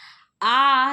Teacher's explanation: आ दीर्घ विवृत पश्च स्वर है